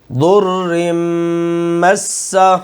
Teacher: میم پر کیا کریں گے، غنہ، ناک میں آواز جائے گی، اور اس کے اوپر پھر شد ہے.